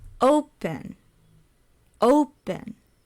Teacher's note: stresses on the first syllable so it's loud and then soft